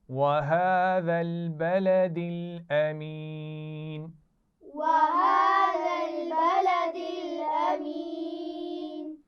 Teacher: جو ذال ہے یہ نرم ہے. اس میں سیٹی کی آواز نہیں آنی چاہیے